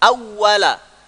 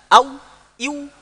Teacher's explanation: Napasnya dihentikan ketika membunyikan huruf waw.